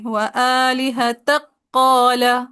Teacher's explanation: کاف کو ڈراپ کر دیا اور تا کو ڈائریکٹ قاف سے ملا دیں گے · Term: مدغم